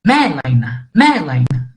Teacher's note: o acento agudo aqui, por exemplo, em melaina, né? A gente sobe o tom no me, né? Então, é melaina, melaina, né? · além de ser a sílaba tônica, nós subimos um pouco o tom